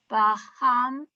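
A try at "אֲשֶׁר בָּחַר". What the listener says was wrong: Char. Let's say Reish.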